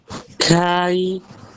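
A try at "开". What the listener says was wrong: Panjangin lagi. Kai. Kalau misalnya tahu ini kayak huruf ini ya, kayak huruf H. K-nya ini K-nya pakai H gitu. Kai ada H-nya tipis. Kai.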